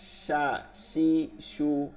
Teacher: আগা দুই দাঁতের আগা সা সি সু সা সি সু আর শিন জিব্বার মধ্যভাগ তালুর সঙ্গে লাগায় শা শি শু তাফাসসির আর বাতাস বের হইতে হয় শা শি